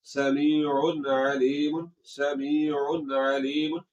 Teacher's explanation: तो ऐसे नहीं करना, आवाज को नाक में नहीं ले जाना, आवाज को नाक में ले जाकर लंबा नहीं करना। · आवाज को नाक में नहीं ले जाना यही इजहार है, नून को जाहिर करके पढ़ना है।